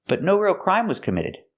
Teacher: The T in but is a stop T.